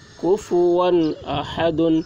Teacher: تنوین کے بعد حروف حلقی میں سے حمزہ آ رہا ہے، اس لیے تنوین کو ظاہر کر کے بلا غنہ کے جلد پڑھیں گے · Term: اظہار